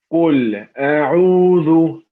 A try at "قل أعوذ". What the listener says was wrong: Here, one thing I noticed, you said أعوذ. It's not ذو, it's ذو. So the very tip of your tongue is going to be between your teeth. If the tip of the tongue is more to outside, outside the mouth, is going to sound like dha.